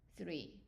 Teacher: it is pronounced like three in English three. So the tongue is between the teeth.